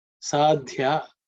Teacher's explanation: This is again fourth letter in the third varga so it has to be aspirated.